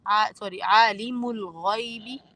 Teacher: اور غین کو آپ نے موٹا پڑھنا ہے